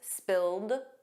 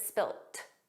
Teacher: In American English, it's always spilled, a soft d, but in British English, it's spilt. T spilt. So, you might hear spilled, you might hear spilt, but those final sounds aren't pronounced fully in spoken English in both British and American English.